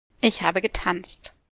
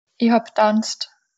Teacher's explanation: si le verbe commence par une consonne occlusive, c'est-à-dire ptk bdg, le préfixe disparaît entièrement.